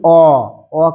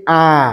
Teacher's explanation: অ কিন্তু কম লাগছে শ্বাসবায়ু। পাশাপাশি যদি বলি আ, দেখো শ্বাসবায়ুটার বেশি আধিক্য পাচ্ছে